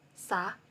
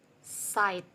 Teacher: tongue blade contacts the alveolar ridge, as sound sa as in the word sight